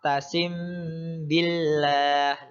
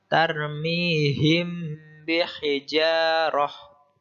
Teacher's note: huruf mim dimasukkan ke hurufba dan dibaca sedikit mendengung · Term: Ikhfa Syafawi